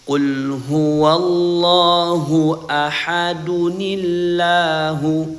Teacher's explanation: Nah, jika ayat pertama ini dilanjutkan dengan ayat kedua atau dibaca wasal, maka bunyi tanwin di sini ya bunyi nun sukunnya berubah menjadi nun kasrah